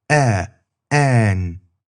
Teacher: It's similar to English's a as in an, but the tongue is a bit higher in the mouth. Kind of close to where you'd say e as in n.